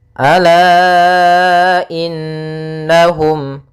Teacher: maka lanya kita panjangkan dengan panjang 4 harokat atau 5 harokat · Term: mad jaiz munfasil